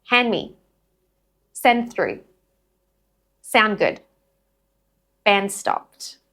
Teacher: So just remember when the d drops, the n links directly into the next consonant sound. There is no gap. If you put a gap, it defeats the purpose of connected speech.